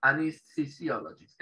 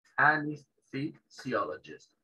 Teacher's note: Esa TH es una Z suave.